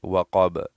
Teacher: غاسقین اذا اس طرح پڑھیں گے. وقب میں قاف موٹا ہے تو اس قاف کو ہم موٹا پڑھیں گے، وقب. غاسقین اذا وقب اس طرح.